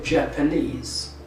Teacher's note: the stress moves from the second syllable to the suffix directly